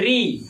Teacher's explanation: री यानी ये जी जो है, जीभ वो दांत के पीछे वाले भाग से टकराता है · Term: मूर्धन्य वर्ण